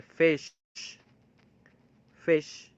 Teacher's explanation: You will use the lower lip and the upper teeth, and there is a partial obstruction of air, and there is a certain for the certain period of time there is a like friction, or we can say that a certain sort of obstruction. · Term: fricative